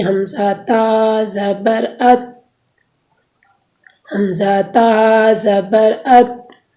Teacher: یہ تیسرا مخرج ہے تا کا، زبان کی نوک جب اوپر کے اگلے دونوں دانتوں کی جڑ کی طرف والے آدھے حصے سے لگے تو اس سے تا ادا ہوتی ہے